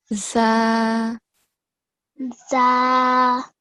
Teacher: the letter zal has a thin sound, and to make that sound, the tip of the tongue is touching the upper front two teeth.